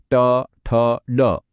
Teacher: જો ટ બોલીશું તો જીભ ગોળ વળીને ઉપરના કઠોર તાળવે અડશે આને મૂર્ધન્ય કહેવાય છે ટ ઠ ડ એવી જ રીતે જ્યારે